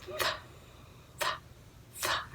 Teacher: unvoiced because you don't have any vibration in the throat.